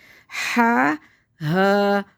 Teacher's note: اس کو ہا کو سینے کی طرح سینے سے نکالیں گے، اس کو ہواؤں کے شور کے ساتھ نکالیں گے